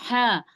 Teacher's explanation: ह को जब हम अदा करते हैं तो हलक के दरमियानी हिस्से से अदा होता है